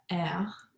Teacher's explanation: the french r is uvular meaning the back of the tongue goes up when pronouncing it